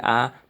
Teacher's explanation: यानी कि अ 2 बार का उच्चारण ज़्यादा दुगना समय लग रहा है इसी का, तो उसे बोल देंगे आ। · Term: दीर्घ स्वर